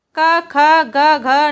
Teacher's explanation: यानी क वर्ग कंठ से बोला जाता है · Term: कंठ व्यंजन